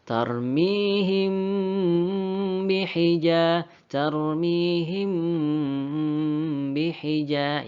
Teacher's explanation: Tadi teman-teman kita sepakat saja ya, cara membacanya kita rapatkan bibir ya. Jadi kita rapatkan bibir kita, kemudian kita dengungkan atau kita lamakan sekitar 2 harakat atau 2 ketukan saja. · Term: ikhfa syafawi